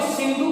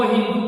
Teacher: इस बात का ध्यान देंगे हम कि प्रारंभ में सिंधु से हिंदू बन जाता है, हिंदू बन जाता है, क्योंकि सौ का यहाँ पर ह बनेगा और यहाँ पर जो ध महाप्राण ध्वनि है इसका भी प्रयोग नहीं किया जाता है फारसी में, ध के स्थान पर द का उच्चारण किया जाता है, इसलिए सिंधु से सर्वप्रथम हिंदू बना है।